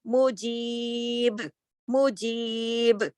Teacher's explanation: جب با ساکن ہوگا تو سکون کے ساتھ آ جائے گا، جزم کے ساتھ، تو اس با پہ کلکلہ ہوگا